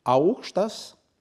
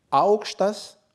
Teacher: le nom augštas, étage, avec intonation douce montante, et l'adjectif augštas, haut, avec intonation rude descendante. Dans les voyelles longues, la même distinction existe, mais elle est beaucoup moins sensible à l'oreille dans l'usage contemporain.